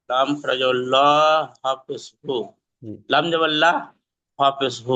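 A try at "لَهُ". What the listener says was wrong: না লাম জবর বলবে না, লাম জবর তো নেই, লাম খারা জবর আছে।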